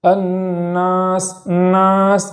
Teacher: نون پر تشدید ہونے کی وجہ سے ایک الف کے برابر گنہ کریں گے